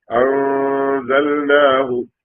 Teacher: അൻസൽന എന്ന് പറയരുത്. അൻസൽന നാവ് മുകളിൽ തട്ടിക്കാതെ മൂക്കിലൂടെയുള്ള മുഴക്കം മാത്രം വന്നാൽ മതി